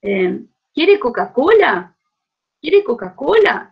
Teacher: este padrón circunflejo sobre la tónica sube y baja en la misma tónica es característico del el patrón interrogativo en el portugués de brasil